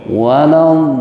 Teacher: Panjangnya 3 alif 6 harokat, nggak boleh kurang, nggak boleh lebih. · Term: mad lazim musaqal kalimi